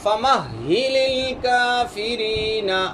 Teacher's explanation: فَمَهِلِ نہیں پڑھنا ہے اس کو، یہ مشدد ہے